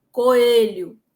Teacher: se eu digo coelho, o E já é como se fosse mais fechado